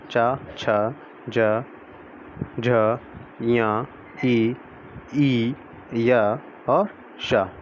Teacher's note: जीभ के मोटे वाले भाग और तालु के स्पर्श से बोले जाने वाले वर्ण तालव्य कहलाते हैं